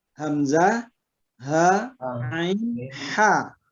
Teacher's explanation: ha itu di tengah tenggorokan dia bersama ain ya